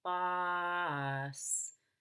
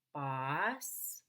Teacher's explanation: Boss, except we're going to go down, up, so it's boss.